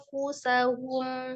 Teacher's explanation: nun sukun ketemu fanya tahan setiap ikhfanya ditahan